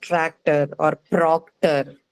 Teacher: you don't observe a clear aspiration in the case of words like tractor or proctor